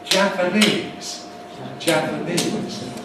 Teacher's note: So the word Japanese, for example, it's actually double stressed. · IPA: [ˌʤæpəˈniːz]